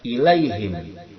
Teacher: Ilaihim itu adalah haraf lin, bukan mad lin, tapi haraf lin yang tidak dipanjangkan, dia dilemaskan saja.